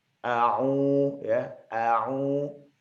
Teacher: Pada saat ain berharokat dhammah ya, isyaratnya untuk u gitu ya, bertemu dengan waw yang bunyinya juga u juga, maka dipanjangkan a'u ya, panjangnya adalah 2 harokat